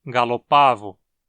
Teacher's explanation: O a na sílaba pá é longo, o que justifica a pronúncia como uma paroxítona